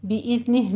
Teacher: ادنا حلق سے اور را مفخم پڑھی جائے گی، بِإِذْنِہ میں دال کو سیٹی کے آواز کے بغیر آپ نے پڑھنا ہے اور قلقلہ بھی نہیں کرنا